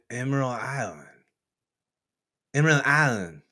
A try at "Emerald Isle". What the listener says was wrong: Emerald Isle, shorter. Yeah, you don't say the whole thing. Just Isle.